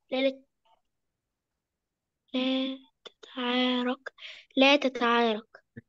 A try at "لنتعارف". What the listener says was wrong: لا لنتعارف. لا لنتعارف، بس هو حط ايه بدل النون؟